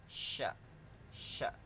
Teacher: bunyinya bersamaan dengan tersebarnya angin yang kuat yang keluar dari dalam mulut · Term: tafasyi